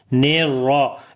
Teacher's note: را کو موٹا پڑھیں گے، زبر ہے اس کے اوپر ، اور ہا کے اوپر پھر صفت ہمس آئے گی۔ اب